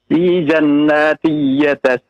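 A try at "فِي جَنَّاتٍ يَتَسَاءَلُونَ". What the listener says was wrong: Fi ada tasydid pada nun, ditahan 2 harokat. Fi ya, ditahan 2 harokat ya. Jangan terburu-buru ya Pak ya.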